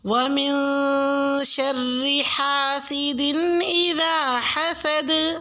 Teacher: حسد میں دال ساکن ہو جائے گا تو اس پہ قلقلہ ہوگا